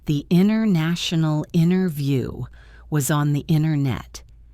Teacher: let's speed it up and drop the T's